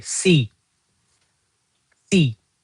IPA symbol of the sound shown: iː